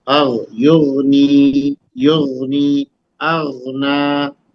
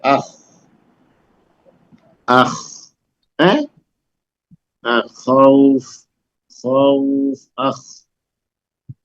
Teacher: شروع حلق سے جہاں زبان ختم ہوتی ہے اس کے بعد حلق شروع ہوتا ہے نا. یہ تھروٹ جو گلا جس کو ہم لوگ بولتے ہیں تو وہاں کے شروعاتی حصے سے یہ غین اور خا ہے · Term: حروف حلقی